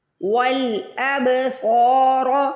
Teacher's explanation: صاد کو موٹا بھی پڑھنا ہے، صاد کو کھینچ کے بھی ادا کرنا ہے کیونکہ صاد کے آگے الف آ رہا ہے، الف مدہ آ رہی ہے.